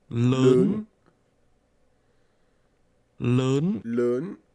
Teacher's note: This word is pronounced with a rising tone.